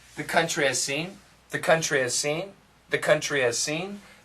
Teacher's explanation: sometimes if we say really fast there's no h